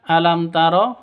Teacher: mim mati bertemu dengan ta. Cara bacanya jelas terang. Kenapa? Karena bacaan izhar sfawi tidak boleh didengungkan.